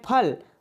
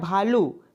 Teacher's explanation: प वर्ग में आपके प, फ, ब, भ और म, ये जो है इनका उच्चारण स्थान कहाँ से है? इनका उच्चारण स्थान आपके ओष्ठ से है।